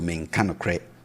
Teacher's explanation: So the tone is down.